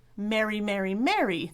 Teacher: Merry/Mary/marry, that vowel is all the same.